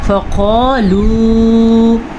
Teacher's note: فقالوا، موٹا قاف اور مد کے ساتھ، یہ جو مد ہے یہ 4 حرکات عربیہ کے برابر ہم نے لمبی کرنی ہے۔